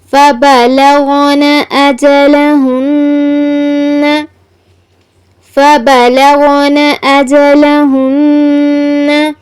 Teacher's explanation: غین پر کیا ہے؟ تفخیم، یعنی غین کو پر پڑھنا ہے اور نون مشدد آیا ہے.